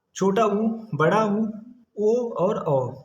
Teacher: जब हम यू का उच्चारण करते हैं तो हमारे होठों की आकृति थोड़ी सी गोल हो जाति है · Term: व्रत मुख, वृत्तमुखी